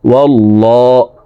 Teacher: আল্লাহ শব্দের আগের হারফে জবর আছে, এই কারণে এই লামকে ল বলে, অর্থাৎ মোটা করে পড়ব। ওয়াল্লাহ হা পেশ হু, ওয়াল্লাহু।